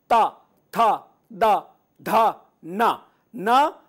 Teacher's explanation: त यह दंत है यानी कि दांत को जीभ जब तक छुए ना तब तक य सही उच्चारण नहीं होगा